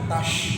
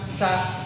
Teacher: kalau sa itu adalah makhraj adalah ujung lidah bertemu dengan gigi seri